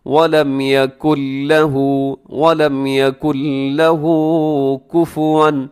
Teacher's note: اس میں نون کی آواز ختم ہو جائے گی کیونکہ یہاں ادغام بغیر غننے کے ہو رہا ہے، اسی یکن لہو پڑھنا درست نہیں ہے۔